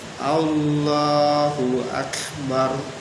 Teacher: huruf kaf itu di depannya sedikit dari kof itu di pangkal lidah, sedang kaf di depannya, sehingga huruf kaf itu untuk mencapai kekhusyuan, kefasihan bacaan kita.